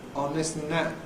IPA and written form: ɒn ˈnɪs ən ˈnæt (on this and that)